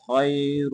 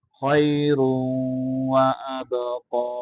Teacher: را کو آگے واو کے ساتھ ملائیں خیر وابقا واو کے اوپر قلقلہ کرنا قاف کو موٹا کر